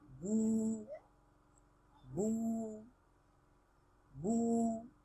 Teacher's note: Wawu maddin, which is used to prolong a letter with dhamma, as in boo, boo, boo.